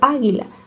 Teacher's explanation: mayor fuerza de voz en la A y se tilda.